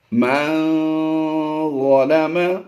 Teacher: غور کیجئے، پچھلا لفظ تھا میم نون زبر من، نون ساکن کے بعد ہم نے یہاں پر ضا کو دیکھا ہے، ضا ہے حروف اخفا سے، نون ساکن کے بعد حرف ضا حروف اخفا سے آیا، تو یہاں پر ہم اخفا کرتے ہوئے یعنی آواز کو ناک میں چھپاتے ہوئے غنہ زمانے کی آواز دیں گے۔